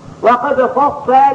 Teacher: اذا وقفنا عليه غادي نقولوا وقد فصل بالترقيق دائما